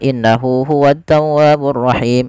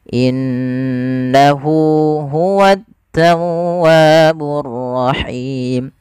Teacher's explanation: ada bacaan gunnah, yang dimana suara nunnya wajib kita tahan. Kesalahan terjadi tidak menahannya.